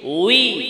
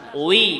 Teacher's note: ঠোট নরম উই শক্ত না বাতাস বের হবে না